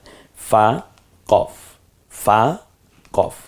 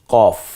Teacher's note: কফটা জিহ্বার গোড়া থেকে একটু গম্ভীর আওয়াজ উচ্চারিত হয়